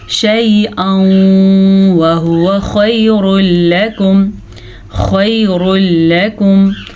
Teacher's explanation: تنوین کے بعد واو آیا ہوا ہے تو ہم نے ان دونوں کو آپس میں ملا دینا ہے، غننے کے ساتھ ملانا ہے، اسے ادغام بالغنہ کہتے ہیں.